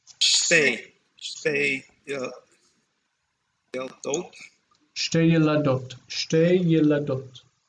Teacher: These numbers, they're consonant clusters. You won't hear anyone say shetei. It's shtei.